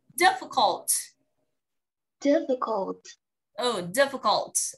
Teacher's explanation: Không phải là y dài đâu nhá. Từ difficult này em giúp mình là âm tờ em phải bật ra đi.